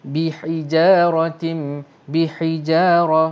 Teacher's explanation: ra ini akan dibaca dengan tebal ataupun disebut sebagai ra tafkhim. Kemudian ada hukum tanwin selepas ra, iaitulah ta berbaris bawah di sini, tanwin tim.